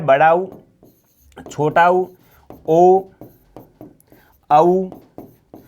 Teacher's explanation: ऐसे स्वर जिनका उच्चारण करने पर जीवा का पीछे वाला भाग सक्रिय रहता है, वो क्या कहलाता है, पश्य स्वर कहलाते हैं